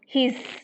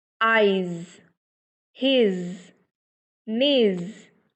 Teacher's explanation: So we should pronounce correctly his, and here the actual sound is z, z, not s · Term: the sound z